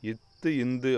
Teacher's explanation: இட்டு இன் அப்படிங்கிறது நாவின் நுனி அன்னத்தின் நுனி இத்து இந்து அப்படிங்கிறது வந்து நாவின் நுனி மேல்வாய் பல்லின் அடி